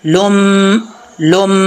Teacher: लाम के ऊपर दो पेश हैं, आगे मीम है, यहाँ पर गुना करेंगे